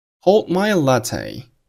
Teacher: 其中▁hold▁结尾的▁d▁失去爆破 ，这是因为爆破音的遇到鼻腔音，爆破音失去爆